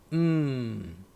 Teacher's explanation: n Jangan sebut en salah n seterusnya m Tutup mulut m jadi bunyi n m dia kita boleh panjangkan sikit Sebab Dia bukan meletup